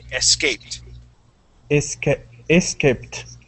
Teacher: the ed at the end will sound like a t